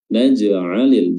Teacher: jimnya qalqalah, ya, qalqalah sughra, qalqalah kecil karena berada di pertengahan bacaan